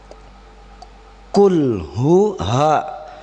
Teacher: ha menyebar di dalam kerongkongan bila penyebutan huruf ha